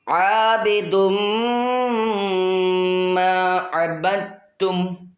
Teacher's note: تنوین کے بعد حروف یرملون میں سے میم آ رہا ہے تو ادغام ہوگا، اس لیے یہاں غنہ بھی کرنا ہے